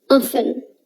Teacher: usually we don't pronounce the letter T in often, but some people do pronounce the T